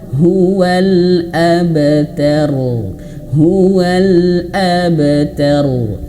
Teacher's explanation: Harus mantul ya. Jadi kalau huruf ba ini dia masuk qalqalah, dia mantul ya.